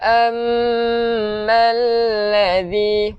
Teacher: hujung lidah keluarkan sikit untuk zal